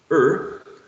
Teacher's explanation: So this is a mid central vowel sound. In terms of length, Long? It's a long vowel sound, right? All of the all of the exactly, all of the ones having colon are long sounds.